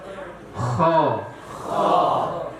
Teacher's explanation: Demikian juga huruf kha, pangkal lidah naik, maka timbullah lidah itu seperti melengkung. Ya. Maka membunyikannya harus dengan menaikkan pangkal lidah.